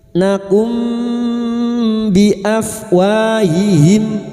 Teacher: Bunyi mim sukun dan mendengung selama tiga harakat. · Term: ikhfa syafawi